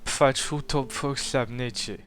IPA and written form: p͡ɸa't͡ʃu to'p͡ɸok ɬaβ.ne't͡ʃe (Aczu Śavnecze)